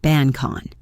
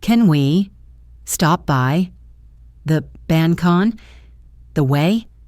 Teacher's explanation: K sound of bank links directly to the vowel in on. This creates the sound bancon.